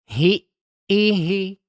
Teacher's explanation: Nah, kalau hamzah, maka suaranya itu langsung berhenti. Ya. Setelah menyebutkan ha kasroh, masuk kepada hamzah ya, ditasdidkan, kemudian hilang suaranya, baru sebutkan harokat kasrohnya di hamzah tersebut.